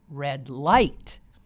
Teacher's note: most people put the accent not on the adjectives there but on the noun